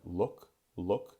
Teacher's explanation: you can see when the shift from ooh - oh that my lips actually go back and become less rounded